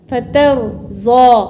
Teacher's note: ता को बारीक रा को पुर और ज़ाद को भी पुर